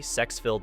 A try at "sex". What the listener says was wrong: I don't think she knows that it's not pronounced shex, but we'll pretend that there's an H somewhere in there.